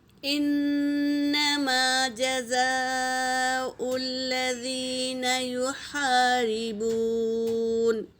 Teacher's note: مد متصل ہے، اسے 3 سے 4 الف کے مقدار کھینچیں گے